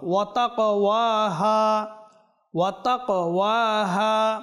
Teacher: ওয়াতাক ওয়াহা বলবেন না, ওয়াতাক যদি বলি এই কফ কি হয়ে যাচ্ছে, কাফ হয়ে যাচ্ছে, তাহলে সম্পূর্ণ ভুল। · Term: কফ কলকল হরফ